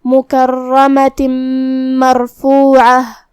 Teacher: फिर हर्फ मीम है कलिमत मरफ़ूआ में दूसरी वाली आयत में, और मीम हुरूफ इदगाम बेगुन्ना में से है, तो हम ये तनवीन को मीम में मिला के गुन्ना और तशदीद के साथ ये हुक्म को अदा करेंगे